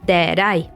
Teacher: The T at the end of that stands between two vowels and we pronounce it as duh.